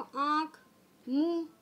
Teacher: इन शब्दों के उच्चारण में नाक और मुँह दोनों से हवा निकलती है, यानी दोनों से उच्चारण होता है, इसलिए इसको कहा गया है अनुनासिक।